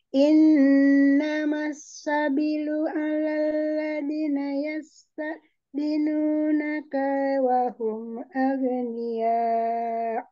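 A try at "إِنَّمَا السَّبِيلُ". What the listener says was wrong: Kita betulkan ada mad yang terlewat tadi sabilu bi-nya panjang kemudian di yasta'zinunaka kaknya tidak boleh panjang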